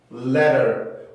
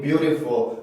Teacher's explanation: T 발음 소리가 조금 부드럽게 변하는 거, 플랩 현상이라고 말씀을 드렸었는데, 플랩 현상이 적용하기 위해서는 규칙이 필요했었죠.